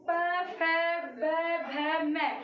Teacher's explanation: ये हमारे प, फ, ब, भ, म, ये हमारे किसको छूते हैं? हमारे होठों को छूते हैं। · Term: ओष्ठ वर्ग